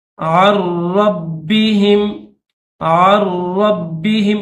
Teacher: عین کے بعد نون ساکن ہے اور را مشدد ہے، تو یاد رکھنا اس میں یہ جو نون ساکن ہے یہ سائلنٹ ہے، ٹھیک ہے، اس نون کو نہیں پڑھیں گے، یعنی یہ نون سائلنٹ ہو جائے گا، عین کو را کے ساتھ ملائیں گے۔